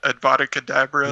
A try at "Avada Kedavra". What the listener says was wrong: you had a B in yours.